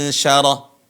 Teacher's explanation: Cara pengucapannya, nun berada di tengah lisan ketemu langit-langit